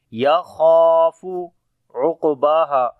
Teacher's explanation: خا اور الف دونوں کو موٹا پڑھیں گے اور خا کو لمبا بھی کریں گے